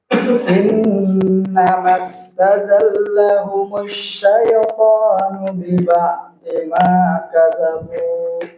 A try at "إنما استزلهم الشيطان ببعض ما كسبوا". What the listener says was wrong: Ya, huruf sin biasa aja. Kasabu.